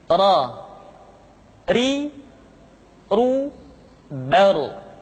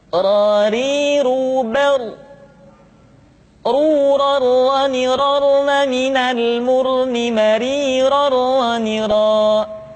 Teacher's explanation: Diucapkan dengan menyentuhkan punggung lidah dengan langit-langit. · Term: huruf ra